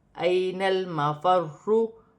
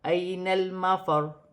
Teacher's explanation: وقف کی صورت میں پیش گر جائے گی اور را ساکن ہو جائے گی۔